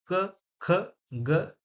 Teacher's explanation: उच्चारण स्थान कहाँ है? कंठ। कंठ मतलब गले के पास। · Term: क वर्ग